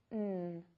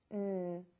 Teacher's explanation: To make this consonant sound, your tongue is behind the top front teeth. The airflow will continue and be directed through the nose, and your voice is on. To make sure that the airflow is going through the nose, put your hand under your nose and say the sound, N. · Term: N sound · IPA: /n/